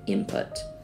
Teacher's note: ends in an alveolar nasal when we use it in input that Coda n assimilates and becomes a bilabial nasal matching the place of articulation of the P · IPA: [ɪn] + [pʰʊt]